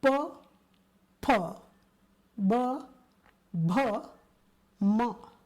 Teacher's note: The pronunciation of these letters happens with the help of lips, and they are called ostia or labials.